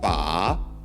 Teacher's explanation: At first, the pitch goes downward and then makes an upward turn just like its symbol. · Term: third tone